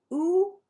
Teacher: And then it goes up, ah, all the way up to oo. Our tongue is going back and high.